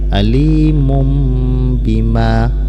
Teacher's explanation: Nah, ini dibaca iqlab, yaitu dibaca menjadi bunyi mim. Alimum seolah-olah ada mim matinya dan disertai dengan dengung